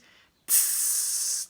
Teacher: I try to start off with going ts as an unvoiced sound in different counts. So I'd start with maybe a count of 4 of those, a healthy breath, and tss, 2, 3, 4, and off.